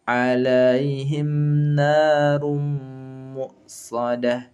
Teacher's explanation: Tanwin ketemu mim nanti, maka idghamnya bi gunnah.